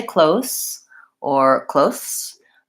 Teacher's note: I want to make sure that my voice is on at the end of that word